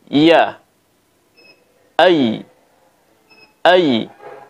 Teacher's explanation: dalam bahasa Arab ini yang pertama yaitu makrot daripada hurufiah itu keluar dari tengah lidah caranya kita menekan bagian tengah lidah ke langit-langit yang berada di atasnya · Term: huruf ya